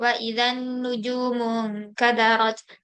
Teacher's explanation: Nun bertasydid ini dibaca dengung dan ditahan. Ini namanya gunnah.